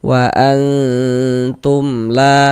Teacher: di bagian wa itu suaranya itu kita tahan, kita panjangkan sebentar kira-kira sepanjang dua harakat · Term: ikhfa hakiki